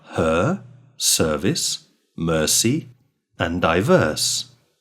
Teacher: The sound is a central accented vowel sound with no lip rounding. Technically, this vowel sound is the open, mid, central, unrounded vowel.